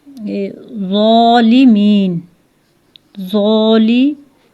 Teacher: ये हर्फ ज़ा जो है मोटा अदा होगा।